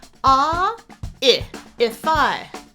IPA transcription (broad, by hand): a ɪ ɪfaɪ